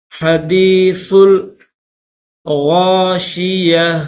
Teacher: درمیان میں یہ الف نہیں پڑا جائے گا، ڈائریکٹ سا کو لام کے ساتھ ملائیں گے، سا لام پیش سل۔